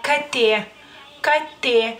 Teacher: la k es sorda pero se pronuncia digamos que más o menos en el mismo punto de la boca que es más o menos como en la garganta